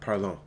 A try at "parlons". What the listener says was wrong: Yeah, there's no T added onto the end of that.